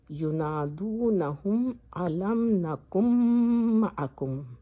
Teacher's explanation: اور میم مشدد کو غنہ کر کے پڑھنا چاہیے، اور اس غنہ میں بھی 2 سیکنڈ ٹائم دینا ہوتا ہے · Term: ادغام شفوی